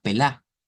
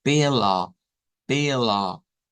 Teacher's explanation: Recordemos que este sonido no es la A nuestra, sino que es esa A donde la lengua se queda como a la mitad de pela, pela. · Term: A media centralizada